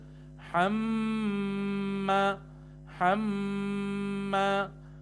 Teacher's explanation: میم کے اوپر تشدید ہے تو ہم وہاں غنہ کریں گے